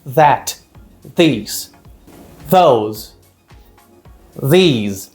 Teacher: É como se fosse um D, juntando com esse som da língua entre os dentes.